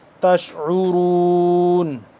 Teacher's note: عین کو نکالیں گے حلقے درمیانی حصے سے تھوڑا سا کھینچ کے